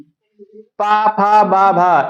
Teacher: दोनों ओठ आपस में स्पर्श होते हैं ना। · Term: ओष्ठ